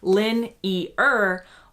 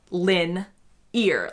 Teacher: it is more similar to a 3-syllable lin-e-er, whereas the way I say it is lin-ear, like your ear.